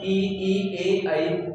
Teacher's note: अग्र भाग की सहायता से ये निकल रहे हैं स्वर ई, ए, ऐ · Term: अग्र स्वर